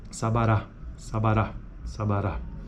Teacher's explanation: a primeira vogal tem acento secundário primeira vogal seria o Sara a segunda vogal é isenta de acento · E a terceira vogal tem acento primário